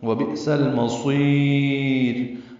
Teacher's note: وبئس المصیر صاد کو لمبا کریں گے، یا باریک پڑھیں گے، را بھی وقفاً باریک ہوگی کیونکہ را ساکن سے پہلے یا ساکن آ گئی ہے، جب بھی را ساکن سے پہلے یا ساکن ہو را باریک پڑھی جائے گی۔